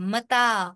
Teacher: تا کیونکہ تا کے اوپر کھڑی زبر ہے، لہٰذا یہ دو حرف برابر لمبا ہوگا